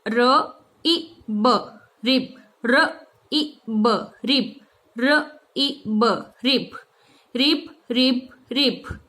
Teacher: आप यहाँ पे आई नहीं बोलोगे, आपको ई बोलना है, और वो भी शॉर्ट टाइम में